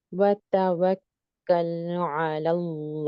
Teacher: واو کو ہونٹ کھول کر کے ادا کریں گی · اس کے بعد کاف کی جو تشدید ہے اس کا خیال رکھیں گے کہ 2 دفعہ سنائی دے. یہاں لام ساکنہ کا اظہار ہو رہا ہے